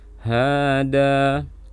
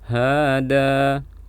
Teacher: Jadi panjang di ha dan di dal sama. Kalau di ha mad tabi'i, kalau di dal mad iwad.